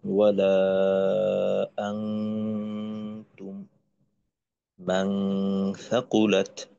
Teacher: এই গুণনার ধরনটা হবে একেবারে বাংলার যেটা অনুস্বর আছে হুবহু অনুস্বরের মতো। যেমন ওয়ালা আনতুম মান সাকুলাত ইত্যাদি। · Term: ইকফা